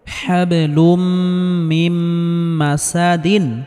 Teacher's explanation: এখানে তানবিনের পরে মিম এসেছে, সেজন্য তানবিনকে গুন্নাহ করে পড়তে হবে। হাবলুম মিম মাসাদিন, এখানে ওয়াকফ করলে দালে জজম দিয়ে পড়তে হবে, অর্থাৎ কলকলাহ করে পড়তে হবে।